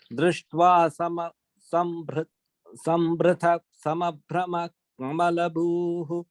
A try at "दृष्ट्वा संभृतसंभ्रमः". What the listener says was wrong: in the first line, sorry, Sambhrita Sambhrama, both are short in the second letters.